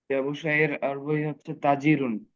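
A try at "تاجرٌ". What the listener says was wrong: তাজিরুন। হ্যাঁ, আমরা তাতে একটু টান দেবো, তাজিরুন।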